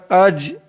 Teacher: जीम ज़बान के दरमियान और तालु के दरमियान से अदा होता है। जीम is pronounce from the middle of the tongue and the middle of the पैलेट।